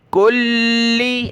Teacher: کلی لام کو سخت کیا تشدید کی وجہ سے